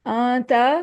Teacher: نون ساکنہ ہے، آگے تا آ رہا ہے، اس لیے اخفا کریں گے